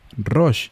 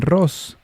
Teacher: De nuevo, cuando las palabras fueron transliteradas, es decir, representadas fonéticamente lo mejor posible el sonido del nombre, del hebreo al griego, el sonido sh, la letra hebrea shin, se cambia por el sonido s. Es posible que el griego no tiene el sonido sh.